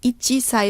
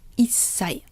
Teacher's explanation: the consonant of the next syllable is pronounced more, stronger, like the double consonant. So instead of ichisai, it becomes issai. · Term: small tsu